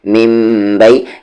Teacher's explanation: کیونکہ نون ساکن کے بعد با ہے اور اقلاب کا رول فال کر رہا ہے، یعنی کہ نون ساکن کی آواز کو ہم میم میں بدل کر پڑھ رہے ہیں